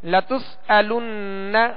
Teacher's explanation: نون مشدد ہے، اس پر تشدید ہے، اس میں غنہ کریں گے